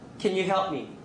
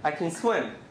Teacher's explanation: in a question, you usually say can. In a affirmative sentence, usually we say kun.